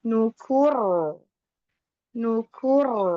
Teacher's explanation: Lalu ee di ayat keenam ini juga diakhiri dengan ro ee ro sukun yang sebelumnya dommah maka dibaca tebal